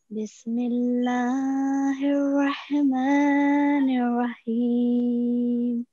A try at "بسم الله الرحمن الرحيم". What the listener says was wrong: Okay, so make sure that the ra, the sound of ra, is thick. Okay, we are going to pronounce it with the tafkhim here in this case. Okay, and here as well. And make sure to work on the sound of ha as well.